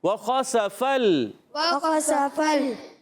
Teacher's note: فا کو لام سے ملانا ہے، لام کو ہلانا نہیں ہے